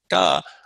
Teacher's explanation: Again, put your fingers in front of your lips, and you want to feel, when I say this da, I shouldn't feel breath coming out